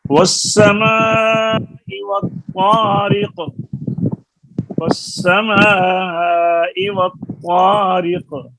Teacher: والسماء والطارق، والسماء والطارق، را کے نیچے زیر ہے اور قاف کے نیچے بھی زیر ہے، دونوں متحرک ہیں اور آپس میں یہ مخارج کے لحاظ سے بھی دور ہیں۔ را کا مخرج زبان کی نوک اور قاف کا مخرج زبان کی جڑ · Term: متباعدین کبیر